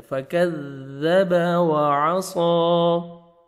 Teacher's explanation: نہیں پڑھنا، فَكَذَّبَ ملائیں گے، سختی سے پڑھنا ہے، فَكَذَّبَ وَعَصَىٰ، عین پڑھنا ہے اور صاد کو موٹا کر کے 1 سیکنڈ کھینچنا ہے